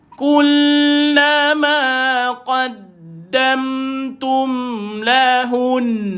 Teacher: Bila nak berhenti pada huruf wajib al-ghunnah, huruf mim ataupun huruf nun bersabdu, maka itulah bunyi tuan-tuan ibu dan ayah. Kena dipanjangkan sedikit 2 harakat bila kita waqaf.